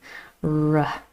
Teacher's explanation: the tongue comes close, but it does not touch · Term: voiced alveolar approximant